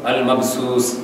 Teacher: جو غلط ہے المبسوس سین کے ساتھ، یعنی تھوڑی سی اس کی آواز کے اندر آپ سیٹی پیدا کریں گے